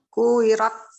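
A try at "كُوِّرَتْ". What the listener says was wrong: Nah, wawunya nggak bertasydid kalau gitu. Diulang.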